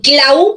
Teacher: la fuerza de voz está en la a no en la u